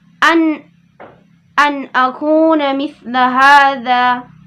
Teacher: nun mati bertemu dengan huruf hamzah adalah dibacanya itu jelas, tidak didengung lagi 2 harokat, cuma 1 harokat saja tanpa didengung. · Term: izhar halqi